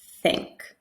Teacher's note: Think versus sink with an S where my tongue is inside my mouth